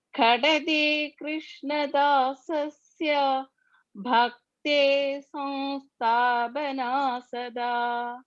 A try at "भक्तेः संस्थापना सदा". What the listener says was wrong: Visarga sakara. Bhakte samsthapan. Visarga is there. And after Visarga, sa is coming. Bhaktes.